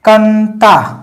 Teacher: गया क्योंकि अनुनासिक तो नहीं है ठीक है अनुस्वार है और अनुस्वार पुरी तरीके से नाक से ही बोला जाता है मुंह से नहीं होता है